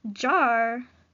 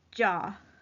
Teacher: maybe a liquid is being replaced by a vowel · a liquid is being replaced by a vowel. So instead of saying jar, they're saying jaw.